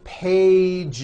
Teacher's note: One page becomes two pages with that voiced Z. Two pages. It's not two pages, unvoiced, no.